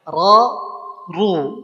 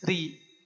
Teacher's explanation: ro ditebalkan diangkat pangkal lidahnya